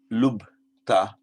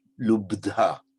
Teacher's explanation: But in fact, what happens, the lubta becomes lubdha. So the T becomes a D, and the aspiration, the H of the B, gets transferred to the second D